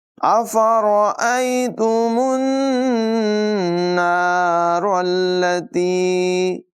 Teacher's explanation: نون مشدد میں غنہ کریں گے، را کو پر ادا کریں گے.